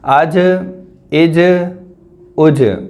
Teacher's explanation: یہاں پر جیم بھی حروف قلقلہ میں سے ہے تو اس پر بھی ہم جنبش کریں گے